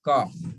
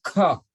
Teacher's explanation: When you say ka, it's soft. You put your hand here, you don't get your breath